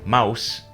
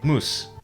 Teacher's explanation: in Middle English the letters o you Represented the sound boom in Southern English and thus in Standard English this sound shifted to ow But in scots it remained unchanged so today in standard English you say mouse, but in scots